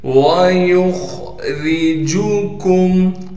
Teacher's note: وَيُخْرِجُكُمْ، واو کو بغیر کھینچے پڑھیں گے، یا کو خا سے ملائیں گے اس لیے کہ خا ساکن ہے، اور خا کو موٹا کر کے پڑھیں گے، را کو بالکل باریک کر کے پڑھیں گے، جیم کو بغیر کھینچے پڑھنا ہے، کاف کو میم سے ملائیں گے بغیر غننے کے۔